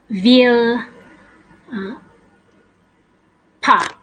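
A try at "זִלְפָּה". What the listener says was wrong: Zilpa. So zilpa, it's a little zayin, looks like a zipper, right?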